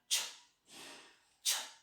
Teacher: आपल्या वर जे म्हणजे वर जी टाळू आहे ना, टाळूच्या पुढचा भाग आणि दातांच्या पाठीमागचा जो ॲल्व्ह्युलर रिजचा भाग आहे त्याच्या पाठीमागे, दोन्हीच्या मध्ये, म्हणजे दाताच्या पाठीमागे ॲल्व्ह्युलर रिज आणि त्याच्या पाठीमागे हार्ड पॅरेट, या दोन्हींच्या मधला जो भाग आहे त्या ठिकाणी हा साऊंड तयार होतो. · So the first is voiceless. First level is voiceless. The second level is palato-alveolar. Palato-alveolar.